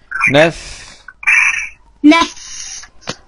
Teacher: مخرج الفاء من بطن الشفة السفلى مع أطراف الثنايا العليا · فاء سكون مع الهمس